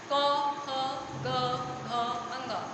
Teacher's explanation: आपको समझ में आ जाएगा कि ध्वनि हमारी कहाँ से आ रही है। कंठ से आ रही है, इसलिए यह कंठ है